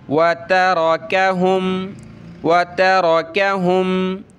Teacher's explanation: را پہ زبر ہے تو موٹا کریں گے، تا کو پتلا کریں گے، باریک تا ہے